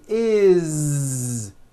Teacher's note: that it's spelled with an S it's never is unvoiced never it's always is with a voiced Z